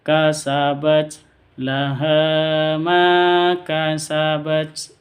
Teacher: Ma panjang dua harakat atau dua ketuk